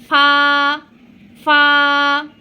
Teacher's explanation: আপনার নিচের ঠোঁটটি একটু দাঁত দিয়ে কামড়িয়ে এই ফাটা উচ্চারণ করবেন।